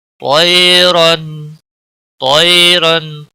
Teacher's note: علیہم، علیہم یالین ہے، تھوڑا نرمی کے ساتھ کھینچ کر پڑھیں گے۔ ہم طیرن، طیرن تو کو موٹا پڑھیں گے کیونکہ حروف مستعلیہ میں سے ہے. رن را کے اوپر دو زبر ہے اس لیے موٹا پڑا جائے گا.